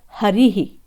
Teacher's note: ई के बाद में विसर्ग आ रहा है, ई पर आश्रित है विसर्ग, ई का उच्चारण स्थल होता है तालु